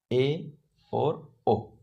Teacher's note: जिन स्वरों का उच्चारण करते समय मुख आधा बंद रहता है एवं जीभ की नोक नीचे की ओर झुकी रहती है। अर्ध संवृत स्वर कहलाते हैं।